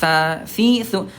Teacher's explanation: huruf sa ini kan tempatnya ujung lidah disentuhkan dengan ujung gigi seri atasnya